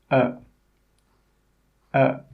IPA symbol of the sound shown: ə